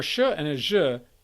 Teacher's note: for sure and azure the tip of the tongue is retracted so it's it's behind the alveolar ridge between the alveolar ridge and the hard palate